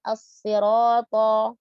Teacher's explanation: huruf ro-nya dibaca dengan tebal, 2 harokat jangan dilebihkan. Dan to dibaca dengan tebal. Jadi di sini berjejer, 3 huruf tebal ya.